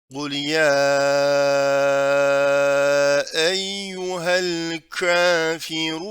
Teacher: Kafirun derken ru'yu kalın okuyoruz.